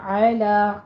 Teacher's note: عین وسط حلق سے اور لام باریک پڑھیں گے